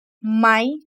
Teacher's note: it's a question word, so the tone is raised